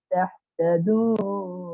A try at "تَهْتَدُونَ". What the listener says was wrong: তাহ এখানে চাপ খাচ্ছে, তাহ হচ্ছে তাহ তাদুন তাহ এই হায় একটু চাপ খায়, এই হায়ের উচ্চারণ ঠিক করবেন, এখানে একটু ঝামেলা হয়। হ্যাঁ, হা হি হু তাহ তাদুন, তাহ তাদুন তাহ বলে কি হবে, হা হয়ে যাবে, তাহ যেন না হয় তাহ, বাতাস ছেড়ে তাহ তাদুন লাআল্লাকুম তাহতাদুন।